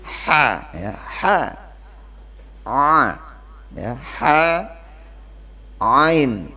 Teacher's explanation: ha sama ain itu tenggorokan bagian tengah